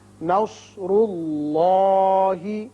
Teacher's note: نون باریک ہوگا، صاد پر ہوگا، را بھی پر ہوگا، اس لیے کہ اس کے اوپر پیش ہے. اسی طرح اس میں اللہ جو ہے اس کے اندر جو لام ہے یہ پر پڑا جائے گا، اس لیے کہ پہلے پیش ہے